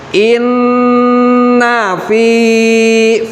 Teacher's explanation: ada ya sukun setelah harokat kasroh, maka cara pembacaannya itu adalah dipanjangkan